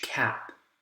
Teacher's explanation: notice how you get a little aspiration at the end right because of the P consonant sound